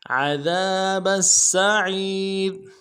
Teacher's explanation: عین کو موٹا ادا کریں گے، یا کے ساتھ ملانا ہے، یا مدہ ایک الف دال میں کھینچیں گے اور را کو باریک ادا کریں گے۔ وقف صورت میں را کو جزم سے بدلیں گے۔